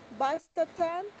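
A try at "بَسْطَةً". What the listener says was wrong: Basta. In the previous page, you learned that Ta, round Ta, Mabuta at the end is not pronounced. Basta.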